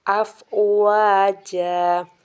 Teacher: دو زبر تنوین کو ہم الف میں بدل دیں گے، یعنی کہ یہاں پہ الف مدہ کر دیں گے